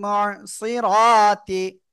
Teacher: রর উপরে জবর মোটা আওয়াজে পড়তে হবে